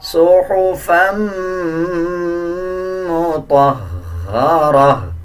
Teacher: اسی طرح جب فا کو میم کے ساتھ ملائیں گے تو غنہ کریں گے اور غننے کی آواز کو ناک سے نکالا جائے گا